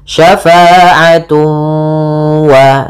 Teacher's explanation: Kemudian pada lafal tun ketemu waw lagi sama sebagaimana syai'an, yaitu ada idgham bi gunnah, cara membacanya ditahan suara wawnya, syafa'atu wa, sambil dimasukkan ke rongga hidung.